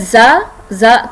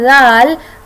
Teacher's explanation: जा थोड़ा सा ज़ोर से बोला जाता है, जबकि जाल सॉफ्ट ही रहेगा।